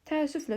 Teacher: Təəssüflə sözü tələffüz zamanı ənin biri düşür, biri uzun tələffüz olunur. Və bununla yanaşı l da ki, lalki nan nən şəklində tələffüz olunur.